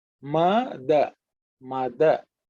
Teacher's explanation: the second letter is not the aspirated one, it's unaspirated. So it's the third letter in the ta varga.